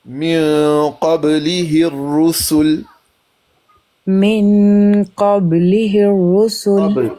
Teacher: قاف تفہیم میں، با کلکلا، اس کے بعد ہا حروف حلقی میں سے ہا، وہ جو سینے کے ساتھ ملا ہوا حلق ہے. اس کے بعد ہے را پر پیش مفخم، سین سیٹی، لام وقف ساکن.